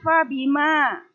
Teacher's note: Fabima, ma di sini dibaca 2 ketukan. Panjangnya hanya 2 ketukan. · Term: mad tabi'i